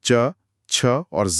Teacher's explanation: जीभ सीधे तालु को छूती है। इसीलिए अह इन्हें तालव्य व्यंजन के इस विशिष्ट खांचे में रखा गया है।